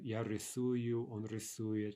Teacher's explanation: The only trick is that the ova becomes u, right? But that u, that's going to retain the stress